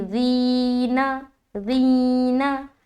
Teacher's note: ज़ाल में या की तरफ प्रेशर भी दे रहे, क्यों? क्योंकि यहाँ मद्दा हो रहा है तो एक अलिफ खींचना भी है। खींचते हुए आवाज़ नीचे को जाएगी